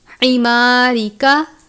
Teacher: را کے نیچے زیر ہے، را کو باریک پڑھتے ہیں